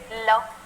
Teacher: जिन व्यंजनों का उच्चारण करते समय जीवा का अगला भाग मसूड़ों को स्पर्श करे और हवा पार्श्व के आधार पर निकलती है उसे पार्श्विक व्यंजन कहते हैं।